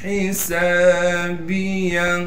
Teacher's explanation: ہا کو صاف کر کے گلے سے نکالیں گے، سین میں سیٹی ادا کرنے کے ساتھ سین کے بعد حروف مدہ میں سے الف ہے، لہذا سین کو ایک الف کے مقدار کھینچ کر پڑھیں گے.